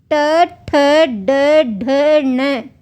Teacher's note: ट वर्ग ट ठ ड ढ न और अंतस्थ का र और उष्म का श इनका उच्चारण स्थान क्या है मूर्धा